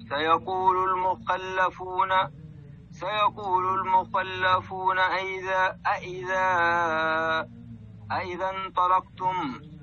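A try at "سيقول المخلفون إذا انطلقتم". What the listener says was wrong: عندك همزة قطع مكسورة وليست همزة استفهام. ما هي همزتين؟ سيقول المخلفون إذا. المخلفون إذا. سيقول المخلفون إذا. اللام مضمومة أحسن الله إليك، ضم فيها الشفتين.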